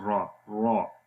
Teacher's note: جب را کو زبر کے ساتھ پڑھیں گے تو را موٹی ہو جائے گی